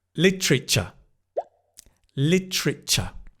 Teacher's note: the 'tr', it becomes, 'ter' becomes 'tr', like train